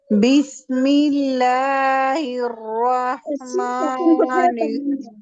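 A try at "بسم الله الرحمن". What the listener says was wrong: प्यारी शहजादी सीन साकिन को टाइम दे मैं कह रही हूँ हर साकिन लेटर को टाइम दे मेरा मुसहफ में शेयर करूंगी ना तो आप कहेंगे क्या करके रखिए हमारे मुसहफ देखते हैं शेर हर साकिन लेटर को हमें हाईलाइट करना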